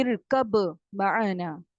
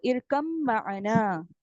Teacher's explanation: آپ نے با کو کمپلیٹ مرج کر دینا ہے میم میں